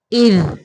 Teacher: ذال کو قلقلہ نہیں کریں گے